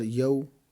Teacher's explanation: پہلا لفظ ہے یا واو زبر یو، میم دو زیر مین، یومین، آگے وقف یوم، یا واو زبر یو، یہ واولین ہے، اس کو نرمی سے پڑھنا ہے، لمبا نہیں کرنا، کھینچنا نہیں ہے۔